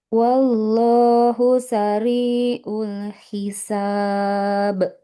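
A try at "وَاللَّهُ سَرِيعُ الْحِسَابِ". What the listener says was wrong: Sariul huruf ainnya jangan terlalu mirip hamzah.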